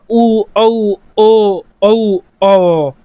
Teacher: अब होठों की गोलाई या फिर ओष्ठों की गोलाई के आधार पर स्वरों को 2 भागों में बांट सकते हैं हम, वृत्ताकार स्वर या फिर वृत्तमुखी स्वर। ऐसे स्वर जिन्हें बोलते समय हमारे होठ ओ का रूप ले लेते हैं, वृत्त बन जाते हैं, एक सर्कल बन जाते हैं, उन्हें हम बोलेंगे वृत्ताकार स्वर।